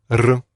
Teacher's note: this is an R sound, but in Russian they roll their R's